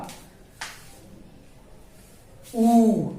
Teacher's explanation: देखिए ऊ को बोलते समय क्या हुआ? ओठ गोल हुआ। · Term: वृत्ताकार स्वर